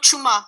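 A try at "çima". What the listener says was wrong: Non, c'est pas chuma, c'est chima.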